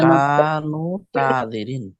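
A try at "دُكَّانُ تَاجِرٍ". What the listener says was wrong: দুক্কানু তাজিরি। দুক্কানু বলে থামিয়ে দিতেছেন কেন? নুনে যে তা ধরবে না, দুক্কানু তাজিরি, সবগুলোই ধরবে।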